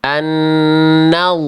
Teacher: Annah enggak pakai monyong, Bunda. Dari nun langsung ke huruf lamnya, Bun.